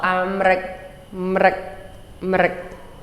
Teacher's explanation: The M really doesn't even, it's so fast it almost doesn't even have a vowel